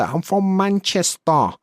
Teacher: I've got that really nasal Manchester accent.